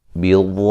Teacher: واد کو موٹا ادا کریں گے، اور یہ جو مد ہو رہی ہے یہ مد لازم ہے